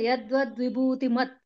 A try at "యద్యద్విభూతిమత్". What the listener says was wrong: యద్వ అంటున్నారు మీరు యద్యద్